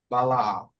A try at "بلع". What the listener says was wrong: بلع. Try to make them all a bit more flat, specifically the lam. It's not almost la, but la, la. بلع. بلع.